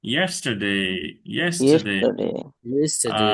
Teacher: তাহলে তিনটা জায়গায়, তিনটা ওয়ার্ডে তিন জায়গায় স্ট্রেস, একটাতে ডেতে স্ট্রেস টুডে, আর এটাতে ইয়েসে স্ট্রেস ইয়েস্টারডে। টারডে হালকা হবে, ইয়েসটা জোরে হবে, মানে স্ট্রেস দিয়ে হবে